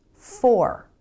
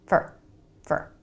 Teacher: Fully pronounced, it's for. But most of the time in a sentence, Americans pronounce it fur. Really fast with a reduced vowel, fur, fur. So if you're expecting to hear for, fully pronounced and clear, then you're never going to hear fur.